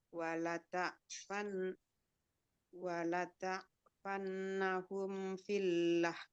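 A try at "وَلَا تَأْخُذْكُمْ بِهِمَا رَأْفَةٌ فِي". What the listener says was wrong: Fi panjang. Filah nil qaul panjang.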